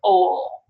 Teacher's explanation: But if you look at L sounds after a vowel, they're produced slightly different, and it has a different sound quality, and it's more like ol, and we call that dark L. Okay, so after a vowel at the end of a word is where you tend to get dark L